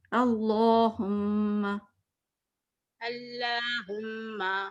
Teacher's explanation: لام جو ہے نا اللہ یہ موٹا کرنا تھا